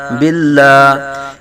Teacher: اس میں جلالت اللہ عز و جل کلام سے پہلے با کے نیچے زیر آ رہا ہے تو لام کو باریک پڑھیں گے